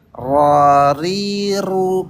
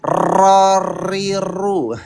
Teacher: R-nya jangan pakai R Indonesia ya, pakai R Arab. R Arab gimana? Getarannya sedikit.